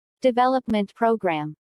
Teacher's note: since these two words make a compound noun the main stress falls on development